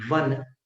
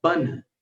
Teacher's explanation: वन का उच्चारण ऊपर के दांत और नीचे के होठ से हो रहा है वन, और बन का उच्चारण दोनों होठों से हो रहा है बन। अंतर समझ में आ गया?